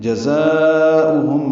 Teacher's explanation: جزاؤہم میں ذات صفیر کی آواز سے ادا کریں گے